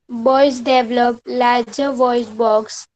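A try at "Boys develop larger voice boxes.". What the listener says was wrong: read carefully. It's written plural and you read it only singular, that is box. Read it again. Voice boxes.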